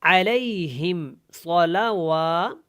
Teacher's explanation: یہاں پہ صاد موٹا ہے اور لام کو لمبا نہیں کریں گے